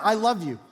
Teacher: a long I, the liquid consonant L, a short O